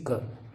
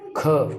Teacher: ख महाप्राण है। ग घ ये जो क है और ग है ये अल्पप्राण है और ख इसमें स्वास ज्यादा लेनी पड़ रही है इसलिए ये महाप्राण है।